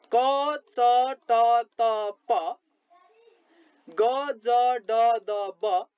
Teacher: अल्पप्राण यसरी थोरै मात्र सास बाहिर निस्किएर उच्चारित हुने अल्पप्राण व्यञ्जन वर्णहरू कुन कुन हुन् त भने हेर्नुहोस् क च ट त प ग ज ड द ब ङ न म य र ल ओ। यी वर्णहरूलाई उच्चारण गर्नुभयो भने थोरै मात्र सास बाहिर निस्किएर उच्चारित हुन्छ